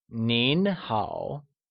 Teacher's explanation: Informally, hello translates to nin hao, where nin is spoken with a mid-rising tone and hao with a falling rising tone